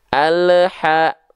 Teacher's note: Terindikasi di ujung pelafalan ada bunyi vokal EU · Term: memantul